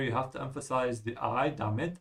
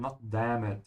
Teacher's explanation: In German, you have to make the I longer.